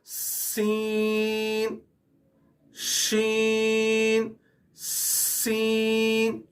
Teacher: اس کے بعد سین شین سین، یہ حروف سٹی والا حروف ہے، اور اس سے تھوڑا جب ہم پڑھتے ہیں تو ہمارے منہ سے پہلے ہوا نکلے گی، ہوا کی زور سے نکلے گی، اور سیٹی بجتے ہوئے یہ الفاظ ادا ہوگا۔ سین شین صاد، یہ لفظ بھی پر پڑھا جائے گا، اور ضاد، اس لفظ کو بہت سے لوگ ضاد پڑھتے ہیں اور بہت سے لوگ ضاد پڑھتے ہیں۔